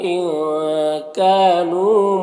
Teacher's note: نون کی آواز کو ناک میں چھپا کر پڑھیں گے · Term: اخفا